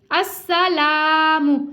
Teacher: سین کو سیٹی کے ساؤنڈ کے ساتھ باریک بھی ادا کریں گے.